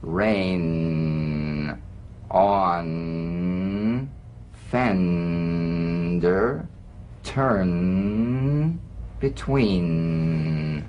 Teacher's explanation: The N is a nasal consonant made with the tongue blade to the upper gum ridge. It's most resonant and it's well forward placed.